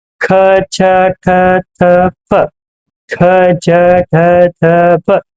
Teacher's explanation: ಅತಿ ಹೆಚ್ಚು ಉಸಿರನ್ನ ಎಳೆದುಕೊಂಡು ಹೇಳುವಂತ ಪದಕ್ಕೆ ಅಂತೀವಿ ನಾವು ಮಹಾಪ್ರಾಣ ಅಂತ ಕರಿತೀವಿ